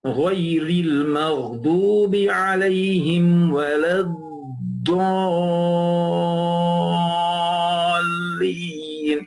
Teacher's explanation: Because of the sukoon in the shadda, it has to stretch 6 harakat.